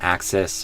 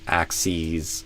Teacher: a s versus z at the end, axis versus axes with a z sound